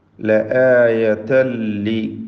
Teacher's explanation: ലആയതൻ തൻവീനിനെ ലാമിൽ പൂർണ്ണമായും ലയിപ്പിച്ച് മണിക്കാതെ ഉച്ചരിക്കുക. ഇദ്ഗാം ബിഗൈരി ഗുന്ന.